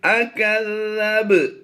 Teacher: ذال پڑھنا ہے، اکز کی آواز نہیں دیں گے. اکذب، با حروف کلکلا سے ہے اور ساکن ہے، تو یہاں پر ہم نے کلکلا صغرا کرتے ہوئے آواز دینی ہے.